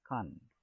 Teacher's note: In the sentence A, content is a noun and is pronounced as con, stress on con.